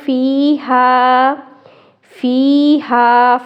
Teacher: فیہا، فا یا زیر فی، یا مدہ والا حرف، ہا الف زبر ہا، الف مدہ والا حرف، ایک ایک الف مدہ کے برابر کھینچیں گے. فیہا، ایک الف مدہ کے برابر کھینچنے کا مطلب یہ ہے کہ اگر آپ اپنی ایک انگلی لیں، اس کو بند کریں اور کھولیں تو اتنی مقدار کے برابر اس کو کھینچنے ہیں.